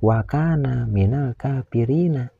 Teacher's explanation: Huruf ro yang berbaris kasroh ini harus dibaca tarkik, yaitu dibaca tipis, karena huruf ro ini berbaris kasroh. · ada huruf kaf yang berbaris fathah menghadapi huruf alif mati. Ini dinamakan mad tabi'i. Harus dibaca panjang 2 harakat.